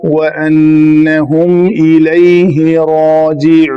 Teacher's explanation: نون کے اوپر جا کے آواز بھی بند اور سانس بھی بند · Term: مد عارض وقفی